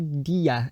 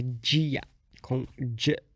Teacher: é dita como [d͡ʒ]ia, então é uma palatalização